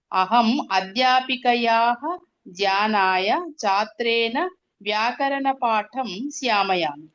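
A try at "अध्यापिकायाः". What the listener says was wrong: అధ్యాపికాయాః అన్ని దీర్ఘాలు అక్కడ.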